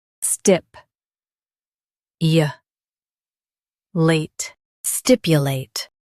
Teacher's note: Stress stip and keep u soft.